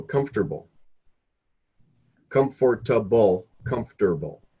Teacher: so these syllables the O R or the O and the E and the a they're cut right out